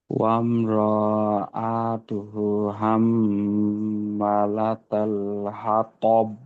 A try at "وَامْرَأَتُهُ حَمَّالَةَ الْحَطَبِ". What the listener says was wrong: আচ্ছা, এখানে বাড়তি টান হয়ে গেল না? ওয়াম র, রতে টান নেই। ওয়াম র এতু হু, হুতে টান শুধু এখানে।